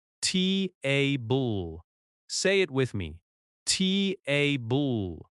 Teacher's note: Think about the word table. In American English, we stress the first syllable.